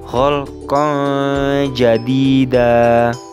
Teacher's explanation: fathah tanwin yang terdapat pada huruf qof alif bertemu dengan Jim yang menjadi salah satu huruf ikhfa sehingganya fathah tanwinnya dibaca dengan cara samar